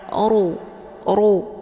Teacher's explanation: ro yang dibaca tebal karena posisi ro ini adalah berharakat zumah cara bacanya posisi pangkal lidah juga ikut terangkat ke langit